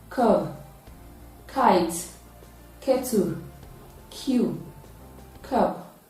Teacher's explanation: The sound is produced with partial obstruction of air in the oral cavity, and then it is a voiceless sound because it is produced with partial obstruction of air. It is produced at the back of the tongue, close to the velum and the soft palate. It is therefore a voiceless, velar, plosive sound. And the spellings include K, C, double C, CK, and Q.